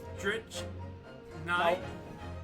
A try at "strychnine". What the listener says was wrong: No, it's not a ch. I just said it's not a ch. It's not. It's strychnine. Strychnine.